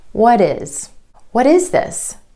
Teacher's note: you're going to hear this quick D sound when the T comes between 2 vowel sounds, whether that's within a word or in between 2 words. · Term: flap T